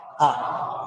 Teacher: विवृत का मतलब होता है मुख का सर्वाधिक खुलना और मुख सर्वाधिक खुलता है आ में